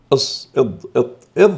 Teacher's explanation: تجتمع فيها صفتا قوة، الاستعلاء والإطباق ، لذلك هي أكثر تفخيما من المستعلية غير المطبقة، المستعلية المنفتحة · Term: المستعلية المطبقة